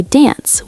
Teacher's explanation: some say dance with a shorter vowel